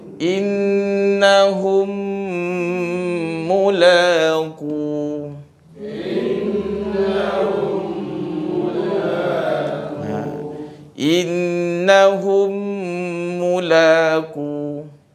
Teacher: Disebabkan mim yang pertama yang sukun ini dia masukkan ataupun dia diidghamkan ke dalam mim yang kedua. Mim yang berjumpa dengan mim. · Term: idgham mislain